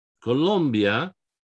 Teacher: what we have here is an i before a vowel so that i is like a y it's not columbia or colombia is colombia right that i is